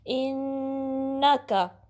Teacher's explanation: ان کا حمزہ کو پھر نون سے ملانا، نون پہ ڈبلیو سائن ہے، تشدید ہے تو اس پہ آپ نے غنہ کا ٹائم دینا ہے